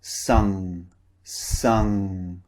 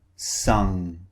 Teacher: The back of our tongue raises up and blocks the air. Sung. The mouth is also very slightly open.